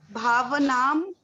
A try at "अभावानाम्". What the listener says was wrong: भाव नाम भी नहीं है, वो भावा नाम है।